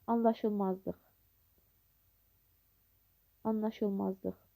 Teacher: daha doğrusu birinci L hərfi N kimi tələffüz olunur.